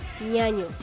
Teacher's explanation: Ñ. Suena. N. Nasal, palatal, sonora.